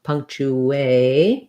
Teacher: And then chew, like the word chew, or you can think about it like chew if that's easier, punctu. And because I'm going from the oo rounded to the A, there's a little bit of a ooh, so putting the W in there is helpful